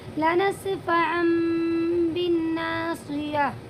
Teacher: ٹھیک ہے، تو یہاں پر بھی 2 زبر کی تنوین ہے اور 2 زبر کی تنوین کے بعد اقلاب کا ایک حرف ہے جو با ہے، وہ آیا ہوا ہے، اسی لیے اس 2 زبر کی جو تنوین کی جو آواز ہے اس کو میم میں بدلیں گے، لنسفعا بالناصیہ، یعنی آپ اسے لنسفعا نہیں پڑھیں گی بلکہ میم کے ساتھ پڑھیں گی، لنسفعا، لنسفعا بالناصیہ۔